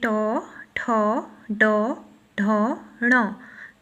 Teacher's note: तो ट वर्ग पूरा का पूरा क्या है? मूर्धन्य व्यंजन है।